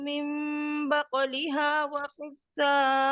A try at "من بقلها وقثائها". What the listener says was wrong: مد پوری کریں، طول نہیں ہوئی.